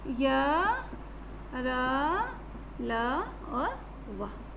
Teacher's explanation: इसमें जीभ मुख के भागों को स्पर्श नहीं करती, छूती नहीं है, अधर ही अधर रहता है। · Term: अंत्यस्थ व्यंजन